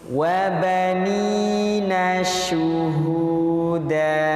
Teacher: syuhu, tapi sebar dulu nafasnya. Karena huruf shin memiliki sifat tafasyi, menyebarnya nafas di dalam rongga mulut.